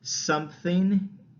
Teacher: you notice how your lips are already closed from the m it becomes really easy to make that p sound